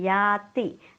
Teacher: या दीर्घ आहे, ती ऱ्हस्व आहे